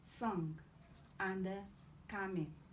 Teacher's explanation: Then you have nge, nge. This is velar nasal as in sung, and coming.